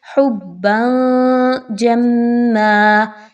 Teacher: نل مال حبا، با کے اوپر دو زبر کی تنوین، اور اس کے بعد جو حرف آ رہا ہے وہ جیم ہے، اور جیم حروف اخفا میں سے ہے، اس وجہ سے آپ یہاں پر تنوین کی آواز کو چھپائیں گے، واضح نہیں پڑھیں گے۔ حبا جما، جیم اور میم کو آپس میں مضبوطی کے ساتھ ملائیے، میم مشدد ہونے کی وجہ سے۔